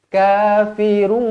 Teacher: mulutnya, bibirnya kena dimuncungkan sebab apa? Sebab kita masuk ke dalam huruf waw kan. So dia akan jadi kafirun, dua harokat.